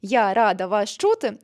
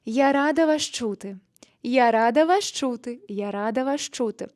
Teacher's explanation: замість того, щоб чітко промовляти кожне слово я рада вас чути, ми з'єднуємо ці всі слова